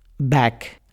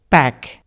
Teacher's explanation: The difference between a b sound and a p sound is not actually very great. Both are bilabial sounds.